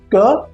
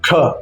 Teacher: क यानी अल्पप्राण बिना अतिरिक्त श्वास के ख है महाप्राण अधिक श्वास के साथ अगर आप हाथ सामने रखकर बोलेंगे तो आप इसे महसूस कर पाएंगे।